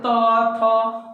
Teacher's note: तो जीभ कहाँ ठेका, तो बोलिए, तो त थ, उस सब में जीभ दांत में ठेकता है, इसलिए हम लोग उसको दंत वर्ण कहते हैं